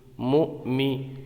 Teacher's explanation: حمزہ ساکنہ کو ہمیشہ جھٹکا دے کر پڑھتے ہیں ، تو یہاں پر حمزہ ساکن ہے، اس کے اوپر جزم